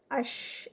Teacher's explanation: اس میں دیکھیں آواز بھی اور سانس بھی دونوں ہی جاری رہیں گے. استفال ہے، لائٹ لیٹر ہے اور انفتاح ہے، پیچھے سے زبان کھلی ہے. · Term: رخاوہ